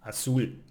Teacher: we need to emphasize the last syllable, like azul, blue, azul ends in an L, it's not N or S, so we need to emphasize the last one, azul.